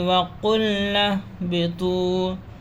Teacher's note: نون کو ہاں میں ملائیں گے، یہ الف نہیں پڑھا جائے گا، نون کو ہاں میں ملائیں گے کیونکہ جزم ہے۔